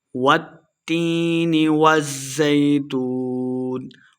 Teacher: والتین تا مشدد ہے، واو کو تا کے ساتھ ملا کے پڑھیں گے اور یا مدہ ہے، 2 حرکات لمبا کرنا ہے۔